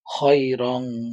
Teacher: আছে ইখফার হরফের মধ্যে আছে কাফ তাহলে আমরা এখানে কি করব গুন্না করে নাকের ভিতরে গুন্না করে গোপন করে পড়বো